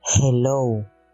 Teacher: La consonante G suena como una H, como la H inglesa, lo que significa que es una fricativa glotal sonora